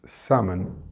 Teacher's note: The word is salmon and the L is silent. It's not salmon, and the stress is on the sam. · and the stress is on the sam. It's not salmon. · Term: silent letter